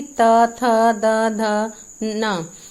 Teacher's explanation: दंत्य क्या होते हैं? जो हमें दांत का स्पर्श करते हुए निकलते हैं, जैसे कि त, थ, द, ध, न। इसमें जो है ओंठ जो है, जीभ जो है दांतों का स्पर्श करके व्यंजन का उच्चारण करती है, तो ये दंत्य हो गए।